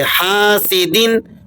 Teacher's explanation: ہا الف زبر ہا، سین زیر سی، حاسی، دال 2 زیر دن، حاسدن۔ الف مدہ ہے تو آپ اسے کھینچ کے پڑھیں گے